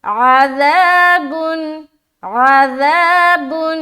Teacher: ذا کو بہت ہی نرمی سے ادا کریں گے، سیٹی کی آواز نہیں نکلنی چاہیے